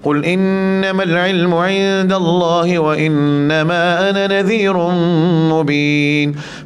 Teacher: Semua mad jaiz munfasil 2 harakat semua bila kita baca riwayat Jazari.